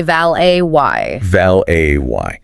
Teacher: When you first see it written out, your brain desperately wants to make it rhyme with mallet or wallet. But because of its French origins in American English, that T is completely silent